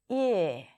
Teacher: If for the tense E, the tongue rolls forward, all the way forward, and you pull the lips and it's a longer sound, for the lax I, the jaw drops a little bit. So there is a little bit of space between the top and bottom teeth. The tongue, as a result, rolls down a bit.